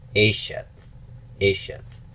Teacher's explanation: The construct form of isha, if you remember from chapter 12, it takes a tav ending, but it's not ishat, which is what you might have expected. It actually takes a segulate pattern with stress on root 1.